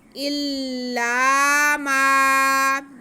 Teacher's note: इल्ला को जितना हमने खींचना उतना ही माँ को खींच देना है। इल्ला माँ की आवाज़ नाक में नहीं जानी चाहिए, डायरेक्ट आप मुँह से इसे बाहर लाएं। इल्ला मा, जब हम मुँह खोल के पढ़ेंगे तो आवाज़ बाहर आएगी, जब हम दांतों को जोड़ के पढ़ेंगे तो आवाज़ डायरेक्टली नाक में जाएगी।